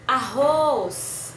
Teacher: os prolongamos na última sílaba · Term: sílaba tônica